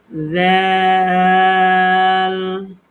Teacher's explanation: এটা হচ্ছে এই যে ছায়ের মতো। জিহ্বার আগা সামনের উপরে ২ দাঁতের আগার সঙ্গে লাগবে। যেমন আমরা সা নরম করে উচ্চারণ করলাম, জালটাও ঠিক ঠিক ঐরকম।